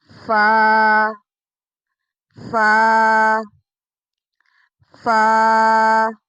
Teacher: فا اوپر کے دانتوں کے کنارے اور نچلے ہونٹ کے تر حصے سے ادا ہوتا ہے۔